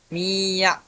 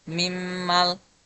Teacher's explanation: cara bacanya dilebur ke huruf berikutnya dengan dengung gunah selama dua harakat. Misalnya, mi ya, nun sukun bertemu huruf ya. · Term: idgam bigunah, idgham bigunnah